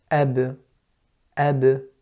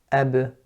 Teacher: that separation that comes when I'm pronouncing the letter ba is producing the qalqala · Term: qalqala with the ba